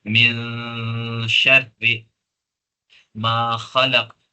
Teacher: ناک کے بانسے میں یعنی ناک میں نون کی آواز کو لے جایا جائے گا اور گننا کے ساتھ اس کو ادا کیا جائے گا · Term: اخفا